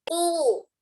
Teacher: tidak sempurna dhammah ketika tidak memonyongkan kedua bibir